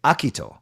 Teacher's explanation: You could put the accent on the first syllable. So instead of Akito, you say Akito.